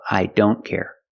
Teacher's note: again with don't the t is between consonants so you don't hear it